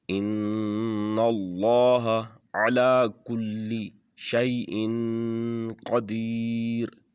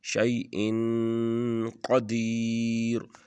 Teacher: یہاں پر اخفا ہوگا کیونکہ تنوین کے بعد قاف ہے تو حروف حلقی میں سے نہیں ہے، اس لیے یہاں پر اخفا کر کے پڑھیں گے